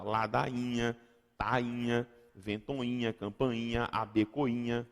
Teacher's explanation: Eu tenho que pronunciar rainha, não tem outra opção. Então, antes de NH, não tem como formar ditongo. Eu formo hiato